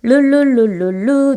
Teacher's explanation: 혀 양쪽으로 흘러나오는 소리인 리을로 되는 유음화, 그 다음에 느무 이렇게 비음이 되는 것, 그리고 이때 유음과 비음은 모두 울림소리여서 울리지 않는 소리가 함께 울리면서 변화하는, 맞춰주는 그런 걸 보셨고요.